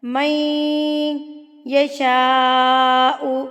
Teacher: یہ نون ساکن جو ہے یہ سائلنٹ ہو جائے گا، مدغم ہو جائے گا، یہ مل جائے گا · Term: ادغام مع الغنہ